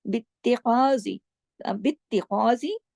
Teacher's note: बित्तिखाज़ी सख्ती से जोड़ा ता की तशदीद की वजह से। बित्तिखा, खा को मोटा।